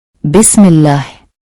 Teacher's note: Pada lafaz tersebut, kata Allah didahului oleh huruf mim yang berharakat kasrah bisme. Sehingga huruf lam pada lafaz Allah dibaca tipis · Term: tarkik